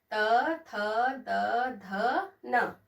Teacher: त में जीभ हमारे दांत को टच करती है।